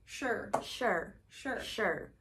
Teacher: So the R is pronounced so quickly that it's technically just sh and R. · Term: R-colored vowel